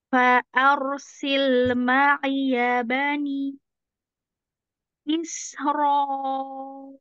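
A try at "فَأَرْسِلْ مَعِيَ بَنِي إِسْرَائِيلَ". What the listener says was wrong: Ya, udah lebih bagus. Lanjut.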